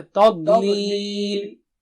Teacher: تا پتلا ہے اور ضاد بہت موٹا اونچا ہے